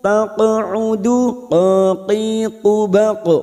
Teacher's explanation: huruf qaf sukun qalqalah sugro yang mati asli di tengah kalimat jangan lupa dipantulkan.